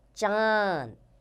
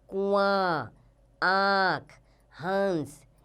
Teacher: देखिए आप उच्चारण करेंगे तो नाक और मुंह दोनों पर खिंचाव आएगा।